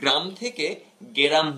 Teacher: এখানে গ্রাম থেকে গেরাম হয়েছে, অর্থাৎ মাঝে একটা স্বরের আগমন ঘটেছে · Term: মধ্য স্বরাগম